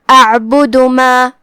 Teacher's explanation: جو کہ آخر میں دال پہ پیش ہے، دھیان رہے ہم دال کو صرف پیش سے ادا کرتے ہیں، اپنی آواز لمبی نہیں کریں گے تاکہ مد واو نہ ظاہر ہو